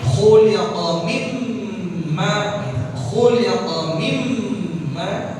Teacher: Ya kha khi khu khuliqa ya, khuliqa mimma, itu ada mimma nun sakinah, nun sukun, nun mati ketemu mim, jadi idgham bi ghunnah ya. Jadi khuliqa mim ditahan ya, ghunnah ditahan, oh harokat mimma, mim ditahan ya, jangan dibaca khuliqa mimma.